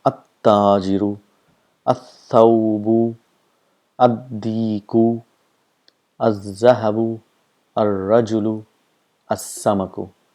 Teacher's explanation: the sound of lam is not produced, and the letter next to it gets a shadda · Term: huruf shams